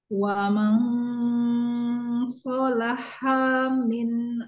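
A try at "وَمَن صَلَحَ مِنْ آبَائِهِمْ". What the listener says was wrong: Ayo langsung ke mim jangan panjang. Wa ma solaha min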